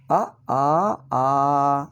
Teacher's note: ಹರಸ್ವದಲ್ಲಿ ಒಂದು ಮಾತ್ರ ಉಚ್ಚಾರಣ ಕಾಲ ಅ ದೀರ್ಘದಲ್ಲಿ ಆ ಎರಡು ಮಾತ್ರಗಳ ಉಚ್ಚಾರಣ ಕಾಲ